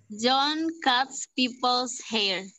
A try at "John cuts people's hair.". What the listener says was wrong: Yeah, very good. Correct grammar, correct spelling, correct pronunciation.